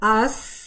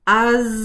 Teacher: अगर जब आप कहते हैं आस तो कोई वाइब्रेशन नहीं होती, आज वाइब्रेशन होती है।